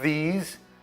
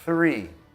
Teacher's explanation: These three, aí você vê que o primeiro é vocal e depois o surdo, que significa o primeiro usa a voz, these, e o segundo usa só o ar, three.